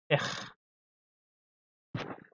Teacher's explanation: Et c'est un son guttural, c'est ici à la gorge